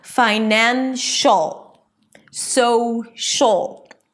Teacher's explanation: The sh and the ul connect, and it feels like there is nothing in the middle there.